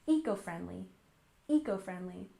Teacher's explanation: And finally, we have eco-friendly with a stress on the first syllable, eco-friendly, eco-friendly. And this is shortened from ecological, but most of the time you will hear native speakers shorten it to say eco-friendly.